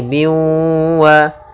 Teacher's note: Maka cara membacanya masukkan kepada huruf waw, ya, maka menjadi biwa sambil ditahan gunnahnya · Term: idgham bi gunnah